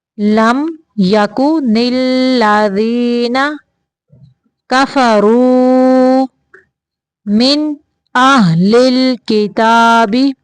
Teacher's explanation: من پہ بھی اظہار کا قاعدہ ہے، صرف نون کو ظاہر کرنا ہے، لمبا نہیں پڑھنا